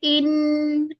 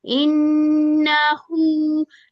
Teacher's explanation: इसकी गुन्ना की आवाज आनी चाहिए, 2 काउंट्स गुन्ना करेंगे